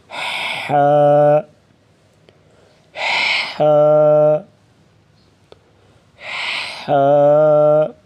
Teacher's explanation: زبان کی جڑ کو حلق کی طرف مضبوطی سے دباتے ہوئے باریک رگڑ کھاتی سانس میں پڑھیں گے